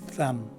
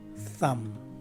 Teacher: The letter B at the end of the word is dropped and not enunciated at all